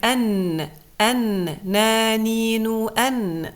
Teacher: Part of the sound comes out from the mouth, and the other part comes out from the nasal cavity. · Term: harf al-noon